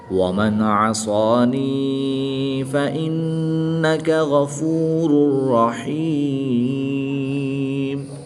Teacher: دو پیش کی تنوین کے بعد را حروف یرملون میں سے ہے، تو یہاں پر بھی ادغام بلا غنہ ہوگا، یعنی کہ بغیر غنہ کے ادغام کر کے پڑھیں گے۔